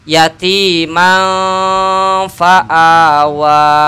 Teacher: tanwin fathah bertemu Fa ikhfa artinya dengungnya tanwin dibaca samar